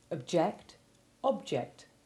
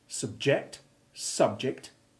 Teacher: Now you say those words. And note how the stress changes to distinguish certain verbs from their nouns